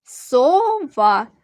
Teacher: сова двоскладове слово наголос падає на другий склад два приголосних звуки твердих два голосних звуки А який перший приголосний